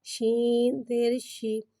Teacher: شین کو ایک الف یعنی 3 مقدار کھینچ کے پڑھیں گے. شین میں تفشی والی سیٹی کو ظاہر کر کے پڑھیں گے. شین کے نیچے زیر ہے لہٰذا زیر کو گراتے ہوئے ادا کریں گے.